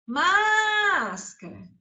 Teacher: Antepenúltima sílaba mais forte. Proparoxítona.